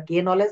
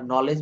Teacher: শব্দের শুরুতে কে N থাকলে তার উচ্চারণ হবে ন এক্ষেত্রে কে অনুচ্চারিত থাকবে